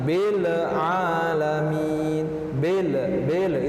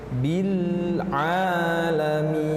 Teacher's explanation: disitu lemnya sukun juga tidak dipantulkan jangan Belle alamin belebele itu dipantul yang tepat dialirkan sedikit bin